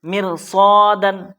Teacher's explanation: رائے ساکنہ سے پہلے کسر آیا، زیر آیا، اس لیے یہاں رائے ساکنہ کو باریک پڑھنا ہے، پتلا کر کے پڑھنا ہے